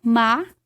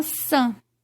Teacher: Na palavra maçã, a gente pode perceber que eu tenho uma vogal oral, ma, e tenho uma vogal nasal, san.